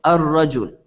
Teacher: sometimes when the AL is added to a word the letter Lam is actually skipped when you're pronouncing and instead you throw a Shada on the first letter uh